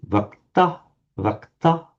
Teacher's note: Back in Vedic, it would be vakta, vakta, with udatta, higher tone.